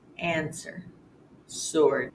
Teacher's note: SW words where you only hear the S sound